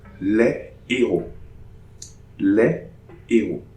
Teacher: No liaison between les and héros. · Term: H aspiré